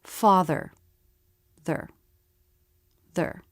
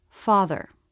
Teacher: just go from the th sound right into the r sound without trying to make a separate schwa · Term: syllabic consonants